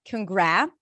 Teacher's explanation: the second syllable, gra, that has the as in cat, which means it's a secondary stress, if we try to reduce it, say it to yourself with a schwa.